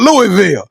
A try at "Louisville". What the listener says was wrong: And you put too much uncomfortable stress on the Louisville. No, it's just Louisville. It's just Louisville. Be easy, Louisville.